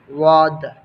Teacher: مخرج نمبر 8، زبان کی کروٹ جب بائیں طرف والی اوپر کی 5 داڑھوں سے لگے تو اس سے واد ادا ہوتا ہے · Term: حروف حافیہ